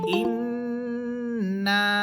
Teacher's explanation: নুন হরফের উপর তাসদিদ, এই জন্য এখানে গুন্না করে পড়তে হবে। এরপর নুন আলিফ জবর না, নুন হরফের উপরে আছে 3 আলিফ টানের চিহ্ন, এই জন্য এখানে 3 আলিফ পরিমাণ টেনে পড়তে হবে। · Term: ওয়াজিব গুন্না